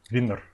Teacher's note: maybe it was my more bilabial V sound, like vinnur